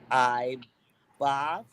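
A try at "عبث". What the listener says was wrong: Not I.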